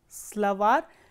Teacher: As you can see, if the ending is stressed, for example, slavar, slavar ends with a soft consonant or a consonant with a soft sign, slavar, and you can see that the last syllable is stressed, var